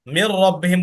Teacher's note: জি এই জন্য এখানে গুন্না ছাড়া মিলিয়ে পড়তে হবে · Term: ইদগমে বালাগুন্না